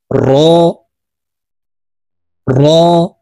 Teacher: জিহ্বার আগার উল্টা পিঠ থেকে এই রর উচ্চারণ করতে হবে।